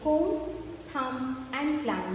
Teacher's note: The word ends with a M sound and B is silent.